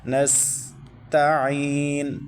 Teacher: عین کو حلق کے درمیان سے مکمل ادا کرنا ہے، اور عین کے بعد یا ساکن ہے، یا ساکن سے پہلے زیر آ رہی ہے، تو یہ یائے لین ہے، یائے مدہ ہے، تو یائے مدہ کو ایک الف تک کھینچنا ہے۔